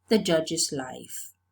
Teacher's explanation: So z, the possessive morpheme is realized as a voiced sound too. And judge, j is a sibilant. So it's realized as an extra syllable